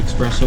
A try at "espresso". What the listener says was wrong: You say espresso? You said it, you added an X in there. Espresso.